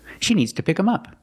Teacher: And they don't pronounce the TH sound.